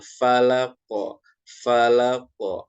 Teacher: huruf qaf ini ketika diwakafkan atau cara bacanya dihentikan atau disukunkan, dia menjadi memantul. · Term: qalqalah